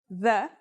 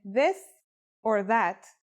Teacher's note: This Letter's pronunciation is a voiced sound the as in this or that it's pronounced with the tongue between the upper and the lower teeth